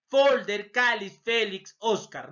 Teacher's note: La mayor fuerza de voz, penúltima sílaba. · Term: graves